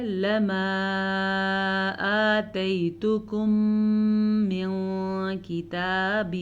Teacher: میم ساکن کے بعد دوبارہ میم آ گیا ہے تو آپ نے غنہ کرنا نہیں بھولنا. نون ساکن کے بعد کاف ہے تو نون ساکن کو ہم چھپا کے پڑھیں گے. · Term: ادغام شفوی